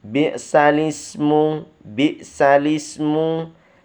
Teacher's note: Nakal, baca nakal memindahkan kasroh pada huruf hamzah ke huruf sebelumnya